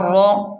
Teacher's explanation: را کو خوب موٹا پڑھیں کیونکہ را پر زبر ہے، را کو پر پڑھیں